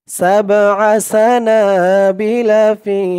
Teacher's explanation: ফি এক আলিফ টান, জেরের পরে ইয়া সাকিন